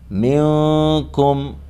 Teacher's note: أَفَلَمْ تَكُونُوا تعقلون، تعقلون، یہاں پر دال میں قلقلہ ہوگا، وَلَقَدْ آواز ٹکر کھا کے الگ ہوگی، منکم میں اخفا ہوگا، نون ساکن کے بعد حروف اخفا میں سے کاف ہے